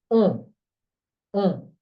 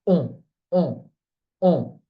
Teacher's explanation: It's a nasal sound and rounded.